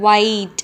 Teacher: ஒயிட் கொஞ்சம் space இருக்குது. ஒயிட் upper and lower லிப்புக்கும் space இருக்கா. ஸோ ஃப்ரிக்ஷனும் இல்லை, சராசரியாக ஒரு ஏர் பாஸ் ஆகுது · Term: லேபியல் வெயிலாருன்னு